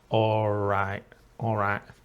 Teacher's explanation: we remove the final T. Also, she didn't use a very clear L, like an all, it became an aw, almost just a vowel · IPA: /orai'/